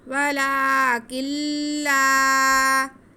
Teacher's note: نون کی آواز بالکل کم آئے گی، کاف کے بعد تقریباً لام ہی پڑھا جائے گا. نون کو ہم لام میں مدغم کر کے پڑھیں گے. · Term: ادغام بلا غنہ